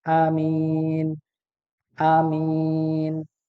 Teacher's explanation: tanpa memanjangkan huruf hamzah